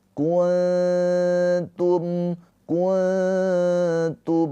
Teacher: nunnya ini di baca dengan samar ditahan dua harakat sambil bersiap-siap masuk ke makhraj huruf ta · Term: ikhfa hakiki